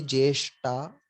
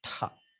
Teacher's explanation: So for the alpa prana, you add one small ha. You add one prana to the alpa prana. So ta, you add one small ha. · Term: Mahaprana